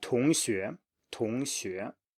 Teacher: make sure you actually pronounce them as 2, identical tones